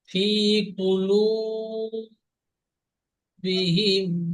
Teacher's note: ফি কুলু, লাম ও পেশ লু, একালি টান দিয়ে বলতে হবে। আপনি হারাকাতের মতন বিনা টানে পড়েছেন।